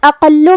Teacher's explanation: کلمت اقل میں حرف القاف کی ادائیگی زبان کے جڑ اور تالو کے نرم حصے سے ہے اور قاف حروف التفخیم میں سے ہے تو ہمیں یہ حرف کو موٹی آواز میں پڑھنا ہے. پھر لام پہ تشدید ہے تو ہم 2 حرف کے برابر لام کو پڑھیں گے